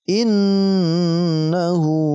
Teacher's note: Innahu, kita dengungkan, ya, karena masuk kategori gunnah musyaddadah. Kita dengungkan dan kita panjangkan dengungnya 2 ketukan.